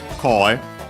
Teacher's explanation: actually from koe, accent on the first syllable, on the ko. Here with the voicing, as typically happens to second words part of the compounds, especially ones of strictly Japanese origins, like this one.